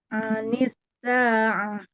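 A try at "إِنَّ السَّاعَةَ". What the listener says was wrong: Sinnya nggak kedengeran sama sekali kalau dia terhembus. Anis. Nah, itu hilang. Harus sampai kedengeran sama orang. baca gini kedengeran nggak ada bunyi desis? Anisa'ah kedengeran nggak?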